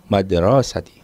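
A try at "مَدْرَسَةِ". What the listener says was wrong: Madrasati ya. Enggak usah dipanjang-panjangkan ya. Madrasati.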